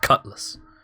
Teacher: Yeah, Cutlass, yeah. Well, it's the vowel is shortened such that it's essentially not there, just Cutlass.